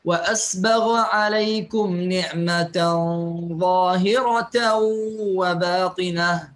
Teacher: يقرأ الإمام شعبة وأسبغ عليكم نعمة ظاهرة وباطنة بإسكان العين وإبدال الهاء تاء مربوطة طبعا منونة